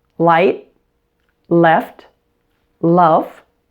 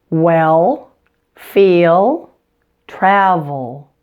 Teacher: it we're hearing with the dark L exactly you'll notice that the sound is held longer and it's also produced farther back in your mouth